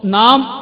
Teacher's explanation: നാം എന്ന് പറയുമ്പോൾ നമ്മുടെ ചുണ്ടുകൾ പരസ്പരം സ്പർശിക്കുന്നുണ്ട്